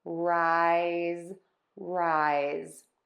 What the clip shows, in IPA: raɪz